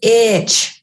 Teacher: And with itch, the vowel is a little less distorted and there's a little bit of a stop between the vowel and the ch that follows it, or the ch includes a stop, a push of breath, and then the ch plosive sound.